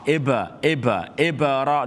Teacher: So qalqala means the sound of ba is going to bounce back.